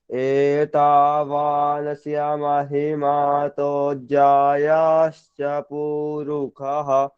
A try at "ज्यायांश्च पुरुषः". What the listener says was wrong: अभी अभी अभी उनको बताया ना, ज्यायाश्च नहीं है, ज्यायांश्च पुरुषः।